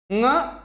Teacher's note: यदि ङ का सही उच्चारण स्थान आपसे पूछे तो आपका एग्जैक्ट उत्तर होगा कंठ नासिका